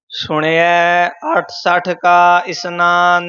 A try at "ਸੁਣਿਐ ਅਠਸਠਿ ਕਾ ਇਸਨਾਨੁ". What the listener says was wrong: ਅਠਸਠ ਅਠ ਤੇ 60 ਪੋਲੇ ਨਹੀਂ ਬੋਲਣੇ ਥੋੜਾ ਜਿਹਾ ਕੱਸ ਕੇ